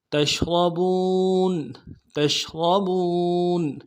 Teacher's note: را کو موٹا ادا کریں گے